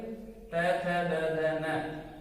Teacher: तय वर्ग तय थ द ध न, इनका उच्चारण हम दांत से करते हैं